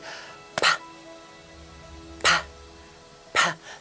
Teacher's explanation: To get that air trapped, and then exploding out.